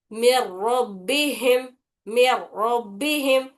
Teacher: मिर रब्बिहिम, मीम रॉ जेर मिर, रॉबा जबर रब, मिर रब, बा जेर बी, मिर रब्बी, हामीम जेर हिम, मिर रब्बिहिम, मिर रब्बिहिम। तो रॉ जो है वो दो मरतबा पढ़ा जाता है, एक बार पीछे वाले हर्फ मीम से मिलाकर, एक बार उसकी हरकत से। नून की आवाज बिल्कुल भी नहीं लाना है इसमें। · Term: इदगाम बिला गुन्ना